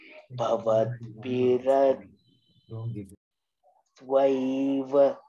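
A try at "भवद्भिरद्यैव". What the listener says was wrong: You're saying dva and it's dha and ya. It's not dha and va. Dhyai.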